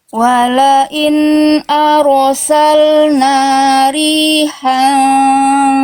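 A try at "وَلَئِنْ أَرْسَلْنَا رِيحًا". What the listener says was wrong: Hanya tegaskan. Riha. Wala in arsalna rihan fara'auhu. Ya, tebalkan apa tuh? Jelaskan haknya. Jangan nanggung Bunda.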